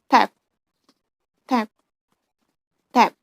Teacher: stop voiceless on alveolar coronal place